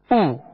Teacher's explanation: ہونٹوں کو کامل گول کر کے ادا کیا جائے، لیکن پیش بھی دراز نہیں ہوگا